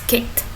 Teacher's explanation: It's delicion because the vowel in the suffix ed is dropped and the t sound is added directly after the c sound forming it as a voiceless cluster